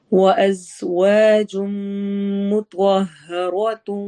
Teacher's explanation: اب وَأَزْوَا میں زا میں سیٹی والی آواز ہوگی، وَجُم میں ادغام غنہ ہوگا